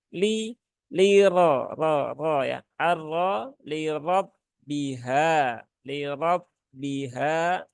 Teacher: rnya berbaris fathah maka ditebalkan ya